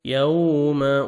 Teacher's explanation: यौम वाव लेन है, नरमी से अदा करेंगे, लिप्स को राउंड में लेके जाएंगे।